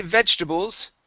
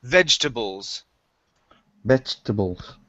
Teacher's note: when we say vegetables, okay, we take out that second E